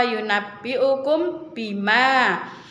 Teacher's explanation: tidak terbaca Kemudian pada lafalfa yunabi ukum Bima Nah itu adalah hukum bacaan ikhfa syafawi karena mim sukun bertemu dengan huruf ba